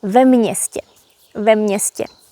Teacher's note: Although město has only one consonant, M, we pronounce it as mě. So actually you hear m and ň together, so there are 2 consonants.